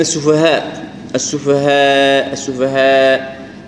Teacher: الهاء مرققة فتكون الألف يعني نطقها مرقق